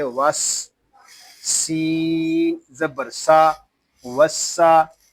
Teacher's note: سین کچھ ادا کرتے وقت سیٹی کی طرح تیز آواز نکلتی ہے